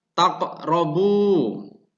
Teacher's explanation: Dan kemudian lafadz yang kedua, taqrabu, yang maknanya kalian mendekati. Cara membacanya yaitu dengan ditekan kerongkongan dengan pantulan ringan. yang secara hukum tajwid diartikan atau dimaknai sebagai qalqalah sugro.